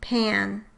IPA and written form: pʰæ̝̃n (PAN)